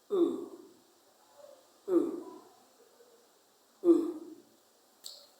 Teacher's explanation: When you say the sound, your mouth is open and the lips are rounded. It's a long sound. The back of the tongue is raised towards the roof of the mouth.